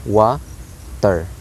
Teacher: wa is the high or accented syllable, while ter is low or unaccented syllable